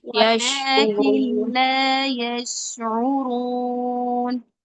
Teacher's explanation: شین نہیں ہلانا ہے، قلقلہ نہیں ہے شین میں